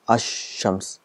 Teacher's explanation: when al comes with shams, the sound of lam becomes silent. It becomes ash-shams. · the al is written, it becomes silent, and the sound of sheen is doubled. So it's ash-shams, so 2 times. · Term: silent Laam